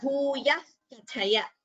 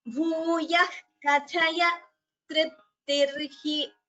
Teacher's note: when a visarga is followed by a ka or a kha, you already know that it is called an jihva muliya. So you get the pronunciation as bhuyah kathaya.